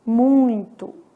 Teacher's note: um ditongo que nasala esse I